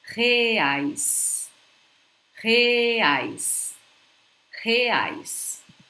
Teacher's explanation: When we have a word beginning with an R in Portuguese, guys, I suggest you guys look at this R as it was an H in the beginning of a word in English, like hotel, hospital.